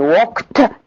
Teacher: The production of ed in walked as a voiceless plosive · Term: Assimilation